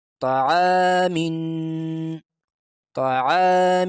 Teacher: طا زبر ط، عین الف زبر ع، تا سے تھوڑا موٹا کرنا، تا باریک ہوتا ہے، طا موٹا ہوتا ہے، تو طا کو تھوڑا موٹا کر کے پڑھنا چاہیے